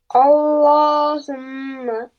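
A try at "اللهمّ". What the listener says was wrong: No, no. You have to apply gunna on meme properly. Allahumma. You are saying humma. You have to apply gunna, which means we have to press the meme for 2 seconds. Allahumma.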